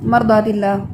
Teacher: اس میں توسط ہونے کی وجہ سے را میں تھوڑا آپ اس پر ٹائم لگاتے ہیں، جلدی نہیں پڑھتے